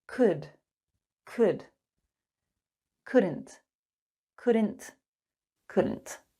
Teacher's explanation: notice the L is silent